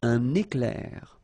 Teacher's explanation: you can see I make this little liaison between the two.